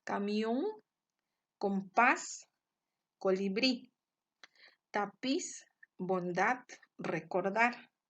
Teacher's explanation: la sílaba tónica se encuentra en la última sílaba y se tildan siempre y cuando terminen en vocal o en consonante N o S. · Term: agudas u oxítonas